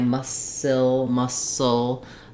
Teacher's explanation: You're really trying to just keep the back of the tongue down and the front of the tongue lifted for the ul sound.